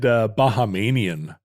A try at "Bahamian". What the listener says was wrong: You added a syllable.